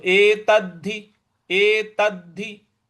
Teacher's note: अगला पद है एतद्धि एतद्धि। एत पूरा है और उसके बाद आधा द है जिस पे हमको बल लगाना है, आघात देना है